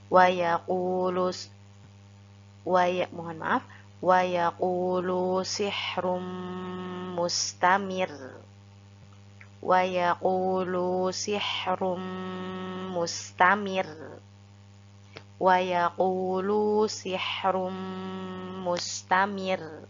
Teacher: ro-nya kita baca tarkik atau tipis, namun tetap kita tekan supaya ro-nya terdengar lebih kuat.